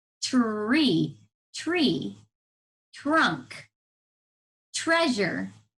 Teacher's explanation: Sometimes when we say tree, it sounds like the ch sound. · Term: TR blend